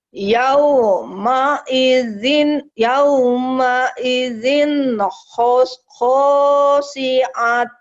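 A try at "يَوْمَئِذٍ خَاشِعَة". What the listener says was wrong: yauma idzin khasyi'ah. Nah, ta'nya berubah jadi ha. Kalau ini namanya tak marbuto. Tak yang seperti ini yang ada gelungnya ini tak marbuto. dihentikan ibunya jadi ha.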